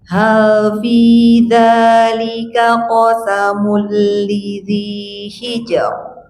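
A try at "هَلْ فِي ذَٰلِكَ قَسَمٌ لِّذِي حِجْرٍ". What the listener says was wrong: Rokna tambah tipis. Emut-emut, rokna tambah tipis. Tipis. Tipiskan.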